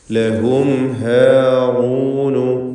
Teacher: സാക്കിനത്തായ മീമിനെ ഇൽഹാർ ഷഫവി നൽകി മണിക്കാതെ വെളിവാക്കണം. ലഹും എന്ന മീം മണിച്ചു പോവരുത്.